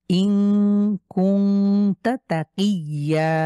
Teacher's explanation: তাহলে হামজা নুন জের ইন, নুন সাকিনের পরে কাফ, এটা গুন্না ছাড়া লেটার, গুন্না ছাড়া লেটারের বাইরে, সুতরাং গুন্না করব ইং। আবার কুং, এই নুন সাকিনের পরে তা হয়েছে, এখানে গুন্না হবে